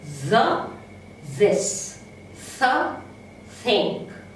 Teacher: Now we have 2 dental fricatives